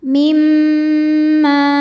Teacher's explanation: Kalau ada dengung, dengungnya dari mim bukan dari tanwinnya.